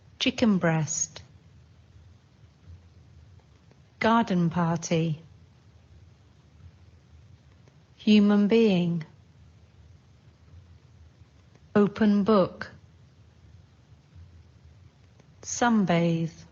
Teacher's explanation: Sometimes n sounds more like m.